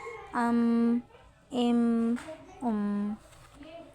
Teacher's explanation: ہوا نکلتی ہوئی محسوس نہیں ہوتی، آواز تھوڑی چلتی ہے، باریک لیٹر ہے اور اس میں غنہ ہوتا ہے،